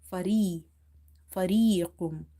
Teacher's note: This ya is madda, that's why we have read it by stretching.